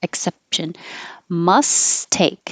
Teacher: you don't release the P either